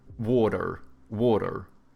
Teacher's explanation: Americans, they have like soft T's and then they pronounce their R's